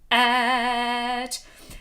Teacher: the front of et is going to need a little kick. A little glottal front.